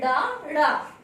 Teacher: इनके उच्चारण में जीभ ऊपर उठकर झटके के साथ नीचे गिरती है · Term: उच्छित व्यंजन